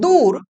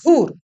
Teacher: অল্প প্রাণ ধ্বনিকে মহাপ্রাণ ধ্বনি রূপে উচ্চারণের প্রবণতা দেখা যায়। অর্থাৎ যা ছিল অল্প প্রাণ ধ্বনি সেটাকে উচ্চারণ করা হচ্ছে মহাপ্রাণ ধ্বনি হিসেবে। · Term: মহাপ্রাণী ভবন